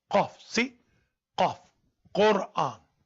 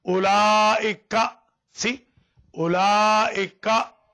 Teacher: A little difference between Qaf and Kaf is Qaf is a little in depth. Qaf. Kaf is easy.